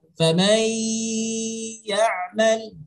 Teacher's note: Nun mati, huruf nun sama huruf ya. Jadi kita memasukkan suara bunyi dengung itu di suara nun mati, bukan di suara bunyi ya.